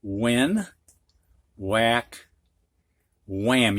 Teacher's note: a couple of these words three of them actually have a silent h when whack wham you don't hear the h it is silent